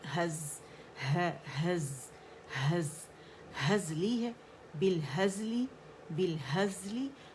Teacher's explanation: اس کا رخاوہ اور اس کی سیٹی ہم نے وسلنگ ساؤنڈ شو کرنی